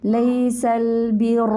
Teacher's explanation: لام کو موٹا نہیں کریں گے, لام باریک رکھیں گے